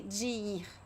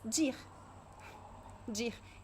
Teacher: So the preposition de connects with the verb ir.